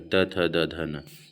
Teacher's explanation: ठीक है? इसका उच्चारण स्थान कहां से होता है? दातों से उच्चारित जो होता है दंत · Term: दंत वर्ण